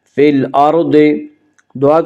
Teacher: ضاد کو پر پڑھیں گے، ضاد حروف مستعلیہ میں سے ہے۔ حروف مستعلیہ 7 ہیں جن کا مجموعہ خص ضغط قز ہے، یعنی خا، صاد، ضاد، غین، طا، قاف، ظا۔